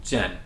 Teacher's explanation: Jian is 4 tone falling